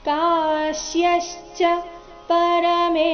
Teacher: ಕಾ ದೀರ್ಘ ಬಂದು ಅದರ ನಂತರ ಆಘಾತ ಬರಬೇಕು. ಕಾಶ್ಯಶ್ಚ ಪರಮೇಶ್ವಾಸಃ ಇಲ್ಲಿ ಸ ಆದ ನಂತರ ವಿಸರ್ಗದ ಉಚ್ಚಾರಣೆ ಅರ್ಧ ಶ ಬಂದಿದೆ.